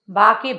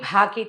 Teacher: బా అంటే అల్పప్రాణం, భా అనాలంటే మహాప్రాణ అక్షరాలు.